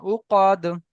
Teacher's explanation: উকদ টান হয়ে গেছে, টান দেবেন না